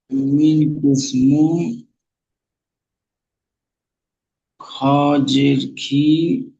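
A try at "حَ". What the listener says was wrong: খ নয়, হা। খ এর উপরে এক নক্তা হয়, এখানে তো কোনো নক্তা নেই, খালি আছে, তাহলে এটা হা।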